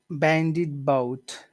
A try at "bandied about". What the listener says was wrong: Yeah, don't forget the duh in the middle. Bandied da bout. Bandied about.